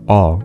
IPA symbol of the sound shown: a